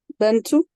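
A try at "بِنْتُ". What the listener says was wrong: Alors, juste la première haraka, Bintou.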